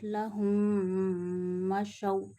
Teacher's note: Look, when after meme sakina another meme come, we take meme sound into the nose and stretch up to one alif, meme sakina sound. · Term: idgham shafawi